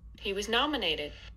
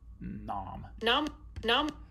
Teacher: if you're like me you hear the most prominence in this syllable nom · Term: most prominent syllable